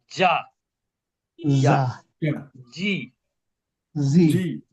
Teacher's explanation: এই জিম অক্ষরটা একটু শক্তভাবে উচ্চারণ করতে হয়, কারণ এটা জিহ্বার মধ্যভাগ থেকে উচ্চারিত হয়। আর জিহ্বার মধ্যভাগ উপরের তালুর সাথে যুক্ত হয়, স্পর্শ করে।